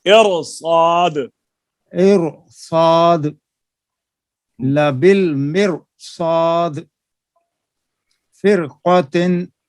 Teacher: را کو پر کریں، صاد کو بھی پر کریں